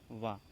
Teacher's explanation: दंतोष्ठ, यानी कि दांत के ऊपर के दांत और निचला ओंठ, इनमें स्पर्श होता है।